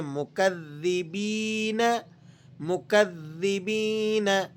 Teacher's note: ذال پر تشدید ہے اور مشدد لیٹر سختی کے ساتھ پڑھا جاتا ہے۔ یا مدہ ہے، اسے آپ تھوڑا سا کھینچیں گے۔